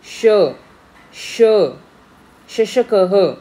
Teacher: जिह्वायाः मध्यः तालुं किंचित स्पृशति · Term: तालव्यः